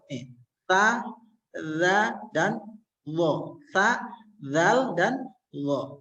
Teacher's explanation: Turun ke bawah agak sedikit melet lidahnya. Ujung lidah dengan ujung gigi seri yang atas akan keluar 3 huruf.